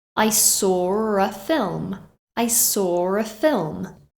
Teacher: can you hear the r that's inserted between saw and a